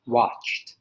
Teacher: that change from watch and then the ed at the end so you would think it's two syllables but it's actually one